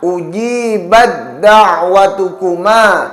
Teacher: Huruf ta yang berharokat sukun diidghamkan pada huruf dal, sehingga hukum bacaannya idgham mutajanisain karena makhraj dari huruf ta dan huruf dal ialah sama, yakni pada pangkal gigi seri bagian atas, sedangkan huruf ta dan huruf dal memiliki sifat yang berbeda.